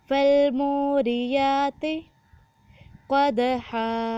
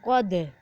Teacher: دال پر قلقلہ کیا جائے گا اور قاف کو موٹا پڑھا جائے گا